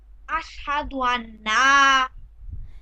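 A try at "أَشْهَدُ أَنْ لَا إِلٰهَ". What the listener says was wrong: এখানে দেখেন নুনের উপর জজম আছে আর লামে তাসদিদ আছে এখন জজমের থেকে তো তাসদিদের শক্তি বেশি আমি আগেই বলেছিলাম তো এই নুনের জজমটা বাদ দিয়ে লামের তাসদিদ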